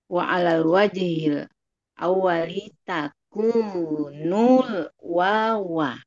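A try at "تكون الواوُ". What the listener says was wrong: Nah, kok wawa sih? takunnya bukan domir, tapi waw ini. Ulangi wa 'alal wajhil awwali.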